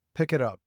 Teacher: Notice how the K at the end of pick joins with the I of it. And the T of it links to up. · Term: connected speech